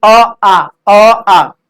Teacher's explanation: अ को बोलेंगे तो कम समय लगेगा और आ को बोलेंगे तो ज्यादा समय लगेगा।